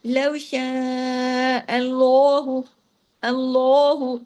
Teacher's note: लाम हैवी हो गया। लेकिन हा को आपने बारीक ही रखना है। साथ में आपने पीछे से नहीं सारा हैवी करके तो आगे तक पहुंचा देना सिर्फ लाम को। · لام ہیوی ہو گیا لیکن ہاں کو آپ نے باریکی رکھنا ہے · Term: लाम जलाला, لام جلالہ